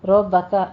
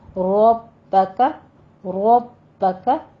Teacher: ربک میں بھی رو کو مفخم کرنا ہے اور با کے اوپر تشدید